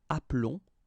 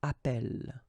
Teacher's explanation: if you have double L like that, it will affect the pronunciation of the E. So actually it will open the sound, and that's the reason why you will get the sound E, okay? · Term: opened E